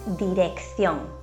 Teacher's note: Por último, en español, cuando encontramos la doble C seguida de las vocales E o I, la primera C se pronuncia de forma fuerte, como una K, mientras que la segunda C se pronuncia de forma débil